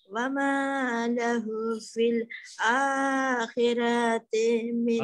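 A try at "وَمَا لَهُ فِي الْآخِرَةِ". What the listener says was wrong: akhirati tan hoye gelo fil akhirati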